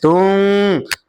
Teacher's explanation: নুন সাকিনকে গুন্নার সহিত মিলিয়ে পড়তে হবে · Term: ইকফার গুন্নাহ